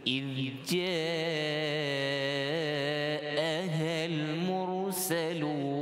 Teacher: Kemudian kalimah mursalun, dibaca tebal pada ra kerana sebelumnya huruf bukan isti'lah tetapi huruf mim berbaris dhammah.